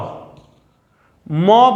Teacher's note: मौ बोले लेकिन दोनों होठ नहीं सटे, करते रह जाएं, कभी भी मौ का उच्चारण आप नहीं कर सकिएगा